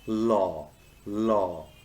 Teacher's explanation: voiced the law sound is called a lateral liquid and is formed by letting the air stream flow around the sides of the tongue as the tip of the tongue makes contact with the middle